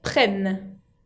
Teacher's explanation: Prennent avec double N, y se insiste bien sobre la N final, y la ENT, la terminaison, ne se prononce pas